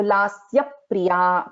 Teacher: So there is a Dvitvam of sa, and then there is Dvitvam of pa also here.